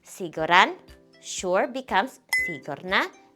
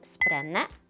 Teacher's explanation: This happens with some adjectives. When the last syllable has a before a consonant, that a disappears.